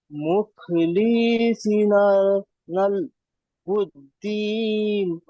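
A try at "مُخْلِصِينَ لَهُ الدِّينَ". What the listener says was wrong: হলো না, টানের প্রবলেম চলছে দেখুন। মুখলিসিনা, এখানে লামের নিচে জের, সদের নিচে জের, এগুলো সব কি আছে? হারাকাতকে টান দেওয়া যাবে না। হারাকাত। হ্যাঁ, সি এখানে টান হবে, কারণ ইয়া সাকিন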